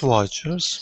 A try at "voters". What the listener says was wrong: it sounded like you were saying watchers like there was a w not a v